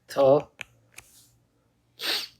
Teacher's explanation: F, v. Then linguodental, where tongue and teeth come in contact